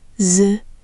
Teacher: It's like the J in jump, but with that curled back tongue.